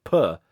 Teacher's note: your P air, your plosive air, when you go puh, there's a puff of air